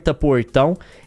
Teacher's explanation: ela fala o R retroflexo, que é o portão.